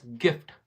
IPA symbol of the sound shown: iː